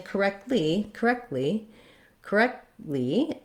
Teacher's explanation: i what happens is it releases into the l so correctly i stop the air for the t with my tongue in the t and l position and then i just release right into the l